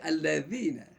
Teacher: Ustaznya mengatakan digigit, alladzina, insyaallah dia tidak akan keluar huruf zai. Bukan allazina tapi alladzina.